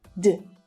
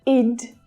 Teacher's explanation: When a verb in its infinitive form ends in a voiced consonant sound, we pronounce the ED at the end of the word as d. Not id, but d, d, d, d. There's no vowel sound there, right? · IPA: /d/